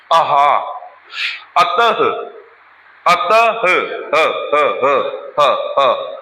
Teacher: विसर्ग भी कहां से बोला जाता है? कंठ से।